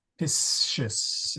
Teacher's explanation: that SC sound in front of an I is a sh sound.